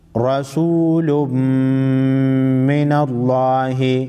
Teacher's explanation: میم مشدد پر غنہ کریں گے. لفظ اللہ سے پہلے اگر زبر ہو یا پیش ہو تو لفظ اللہ کے لام کو موٹا پڑھیں گے، اگر زیر ہو تو لفظ اللہ کے لام کو باریک پڑھیں گے.